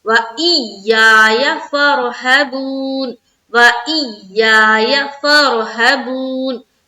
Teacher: فر را کو پر رکھیں گے، ہبون ہا کو جلد پڑھ رہے ہیں، با وا پیش بو یعنی کہ واو مدہ کر رہے ہیں، انون کے اوپر ہم وقف کریں گے.